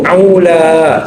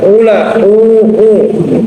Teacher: Ainnya dibaguskan, aula. Nah, jadi bukan ula, au ya. Jadi tenggorokan tengah maksudnya.